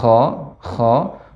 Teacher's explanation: adapun kha ada sifat hikka atau hukkah seperti garukan